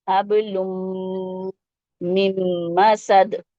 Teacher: تو ایسے پڑھیں گے اس کو، حب لم. اور پھر میم کو میم سے جوڑیں گے کیونکہ نون پہ جزم لگا ہے، اس لیے میم کو میم سے جوڑ دیں گے، حب لم مم مسد.